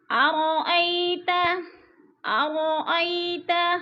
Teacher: ارأی پہ یا لین ہے، کھینچنا بھی نہیں ہے، جھٹکا بھی نہیں دینا